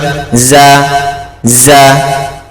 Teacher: যা পড়ার সময় ঝিঝি পোকা আওয়াজ করে, এই আওয়াজটা বেরাবে। যা এক আলিফ টান, যা যা, ঠিক আছে?